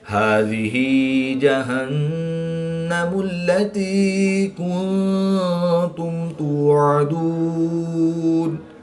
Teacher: نون مشدد میں ہمیشہ غنہ ہوتا ہے تو یہاں پر ہم غنہ آنی کر کے پڑھیں گے